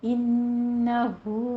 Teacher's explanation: ہو میں مد صلہ صغرا کریں گے، الٹا پیش ہے، 2 کاؤنٹ کرنا ہے